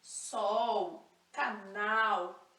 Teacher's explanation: aquele l com a língua lá no céu da boca